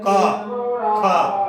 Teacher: तो जब का और खा का उच्चारण करेंगे तो जीवा का जो बिल्कुल जड़ होती है, जो प्रारंभ होता है, वहां से आवाजें गूंजती है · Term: जीवा मूल्य